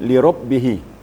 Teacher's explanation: Ba itu sifatnya adalah syiddah. Syiddah artinya terputus, tidak mengalir suara waktu mentasdikkan. Di li rabbihi, berarti terputus suara kita.